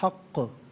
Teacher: अब यहाँ पर आप देखें, हक़ को जब वक्फ़ करेंगे तो हक़ पढ़ेंगे, और चूँकि क़ाफ़ हर्फ़ क़लक़ला है तो आवाज़ लौटती भी महसूस होनी चाहिए